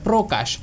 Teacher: শুরুতে ব্যঞ্জনবর্ণের সাথে যদি রফালা যুক্ত থাকে সেক্ষেত্রে তার উচ্চারণটা অকারান্ত হয়ে যায়